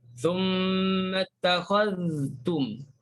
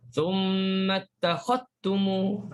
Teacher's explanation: Nampak zal tu masuk dalam ta. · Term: idgham